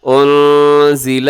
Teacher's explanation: یہاں پہ اخفا ہو رہا ہے، نون ساکن کے بعد زا ہے تو یہاں اخفا کیجیے گا